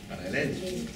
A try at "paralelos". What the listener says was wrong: el acento está en la E, más que en la para.